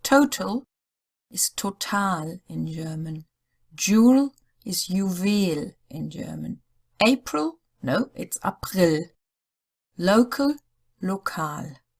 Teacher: four words which are almost identical between English and German but each time in English the stress is on the first syllable and in German on the second one